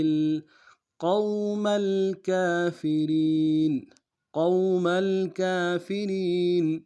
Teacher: قاف کو واو کے ساتھ ملانا ہے، قاف کو موٹا ادا کریں گے، واو لین بغیر کھینچے پڑیں گے